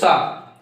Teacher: ये संघर्ष करके निकलते हैं, मतलब इनको बोलने पे गर्म हवा निकलती है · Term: संघर्षी व्यंजन